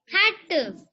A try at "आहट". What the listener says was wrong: आहट है हट नहीं है। आहट आ की मात्रा लगी हुई ना अल्लाह पे इसलिए हम आहट बोलेंगे इसको।